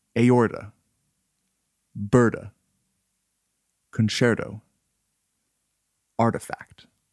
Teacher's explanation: t also turns into d when the t occurs between r and a vowel sound